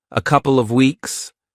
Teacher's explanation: did you also notice how he dropped the V in off?